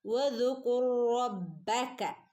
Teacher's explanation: കൂട്ടിച്ചേർത്തോതുക കേട്ടോ. റോയിനെ റോയിലേക്ക് കൂട്ടിച്ചേർത്തോതുക